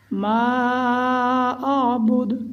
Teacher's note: آخر میں جب ہم دال پر وقف کریں گے تو یہاں قلقلہ کریں گے دال میں